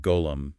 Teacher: voiced fricative, kind of like gargling, lightly used in words like golam, meaning servant.